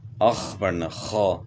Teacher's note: خا کو گلے کے شروع سے ادا کرنا ہے